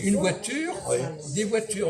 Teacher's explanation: Moi, On dit une voiture, des voitures, on n'entend pas le S